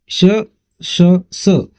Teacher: मुखावाटे जोराने उसासा बाहेर टाकल्याप्रमाणे या वर्णांचा उच्चार होतो यात घर्षण आहे घर्षणामुळे उष्णता निर्माण होते म्हणून मित्रांनो त्यांना उष्मे असे म्हणतात बघूया